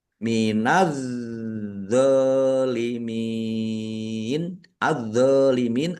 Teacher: alif lam syamsiyah karena tidak dibaca langsung masuk ke huruf berikutnya yaitu dha ditandai dha-nya ada tasdidnya.